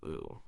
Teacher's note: a high back tongue with rounded lips gives you oo